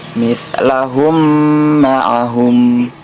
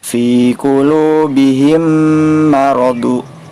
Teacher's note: Maka ketika terjadi hal tersebut, terjadi mim sukun bertemu dengan huruf mim, maka cara membacanya harus dipanjangkan 2 harokat. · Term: idgham mutamasilain